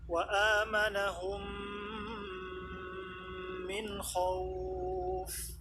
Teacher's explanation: Mim sukun bertemu dengan mim berharokat, maka diidghamkan mim sukun ke dalam mim yang berharokat, disertai ghunnah akmal. Disertai ghunnah akmal, sempurna-sempurnanya ghunnah.